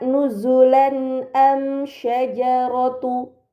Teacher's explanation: fathahain yang bertemu dengan huruf hamzah maka harakat fatahain tersebut harus dibaca secara jelas